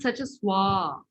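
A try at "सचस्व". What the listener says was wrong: yeah, it is sachasva, should be a, short a.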